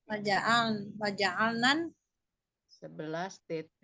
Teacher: bukan waja'alnal, tapi masuk ke nun